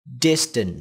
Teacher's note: từ này có 2 âm tiết nhé và trọng âm của nó rơi vào âm Tiết đầu tiên distance đ và tiếp theo đó là amin ngắn chúng ta